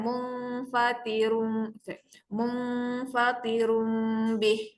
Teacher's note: Itu hukum iklab ya. Jadi mula dengung pada nun tak ada tanda. Kemudian rung tu hampir rapat bibir.